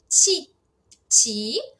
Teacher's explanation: a gente tem o TCH porque tá no começo da palavra com a vogal i. Então consoante esquerda, vogal à direita porque a vogal é em pezinha.